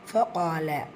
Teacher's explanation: காஃப் வல்லினை எடுத்து அதற்கான வல்லின தன்மையை கொடுத்துட்டு அலிஃப் மத்தா 2 ஹரக்கத் அளவு நீட்டம் கொடுக்கணும்.